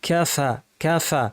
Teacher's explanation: খেয়াল করে আওয়াজ বাতাস জারি রেখে ফ্যাস ফ্যাসে আওয়াজ করতে হবে।